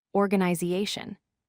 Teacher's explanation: Organization has stress on the third syllable.